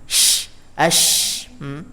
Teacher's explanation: Ya, terutama yang dia tasydid atau sukun. Nah, bunyinya tafasyishi atau memenuhi mulut, keluar dari sela-sela gigi ya